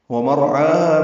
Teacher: مدہ 2 حرکات لمبا کریں گے، ومرعاها میں را پر ہے، عین وسط حلق سے ادا کریں گے